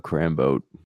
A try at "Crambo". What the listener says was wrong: it's pronounced Crambo, by the way, dude. It's Crambo without the T. No, it is Crambo.